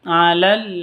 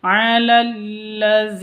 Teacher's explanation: Alal langsung masuk ke lamnya karena alif lam ada tanda tasydid asyamsiyah